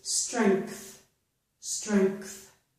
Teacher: I pronounced this G, letter G in here, as a K, almost as a K sound